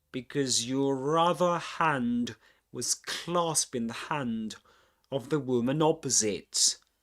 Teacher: What we mentioned, what we've been mentioning so far, is that in because it's pronounced with a schwa sound at the end